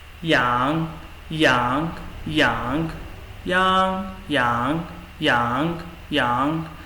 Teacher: The first one is with the second tone